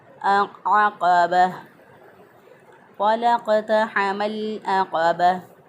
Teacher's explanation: आइन को वस्ते हलक से अदा किया और क़ाफ़ जो है इसको ज़ुबान की जड़ ऊपर के तालु के साथ लगाकर, नरम तालु के साथ लगाकर हमने क़ाफ़ को अदा किया।